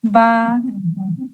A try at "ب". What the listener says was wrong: اور کھینچیں اسے، با.